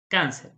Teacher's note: La sílaba tónica es la penúltima. Sin embargo, la palabra está terminando en R.